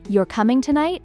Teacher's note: With a rising tone, crafting it as a question.